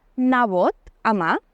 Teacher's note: l'alguerès no té vocal neutra. Les vocals A i E en posició àtona sempre es pronuncien com una A. Per exemple, diuen nebot a mà.